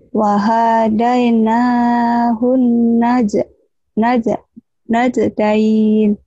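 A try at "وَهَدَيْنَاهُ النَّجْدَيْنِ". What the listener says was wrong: Wahadain jangan panjang di sini pendek semua ya. Wahadai, wahadai, wahadaina, wahadainahun najdain.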